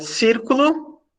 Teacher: circulo é a terceira de trás para frente a que tem o acento a tônica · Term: proparoxítona